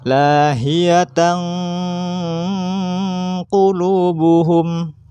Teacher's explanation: masukkan suaranya tanwin kepada qaf, huruf setelahnya, dengan disertai gunnah atau dengung